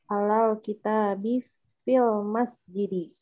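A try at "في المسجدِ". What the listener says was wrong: Fil masjidi, Masya Allah.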